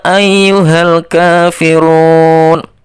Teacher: lafal ia itu dibaca lima ketukan atau dua setengah lift karena itu bacaan mad wajib muttasil kemudian